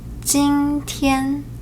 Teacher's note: The first tone is a high and flat tone